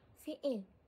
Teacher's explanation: Terdapat dua vokal rangkap yang telah saya jumpai dalam gorendam iaitu yang pertama fi'il yang terdiri daripada dua vokal I dan seolah-olah terdapat klotis di tengah-tengah